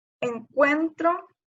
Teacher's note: la sílaba tónica es cuen, porque es la que suena más fuerte